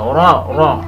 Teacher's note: را کے اوپر زبر ہے، اس لیے را موٹا پڑھیں گے، را، را، منہ گول کریں گے۔